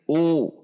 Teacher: dhammah dibaca u dengan membulatkan bibir u. Tidak dibaca tapi u.